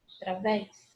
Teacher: Oxítona, última sílaba tônica.